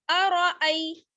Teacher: حمزہ کو یا سے ملائیں گے، یہاں پر یہ یا لین ہے، یا ساکن ہے، اس سے پہلے زبر کی حرکت ہے. اس کو جلدی پڑھیں گے، کھینچنا نہیں ہے. ارأی، را کو موٹا پڑھنا ہے کیونکہ را پر زبر ہے.